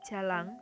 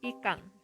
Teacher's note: ketika fonem N pada akhir kata diucapkan menjadi eng